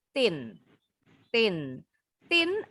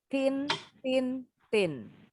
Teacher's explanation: Jadi kalau bunyi huruf t ujung lidahnya nggak keluar Tin Tin